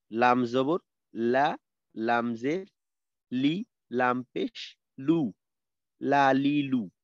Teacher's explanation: 8 number মাখরাজ হলো জিহ্বার আগার কিনারা। জিহ্বার আগার কিনারা সামনের উপরের দুই দাঁতের মাড়ির সঙ্গে লাগাইয়া উচ্চারিত হয় লাম।